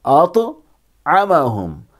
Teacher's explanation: یہاں طا ہے تو طا میں قلقلہ ہوگا، یعنی آواز ٹکر کھا کے الگ ہوگی